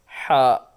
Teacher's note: Ha also throated letter. We pronounced from middle part of throat.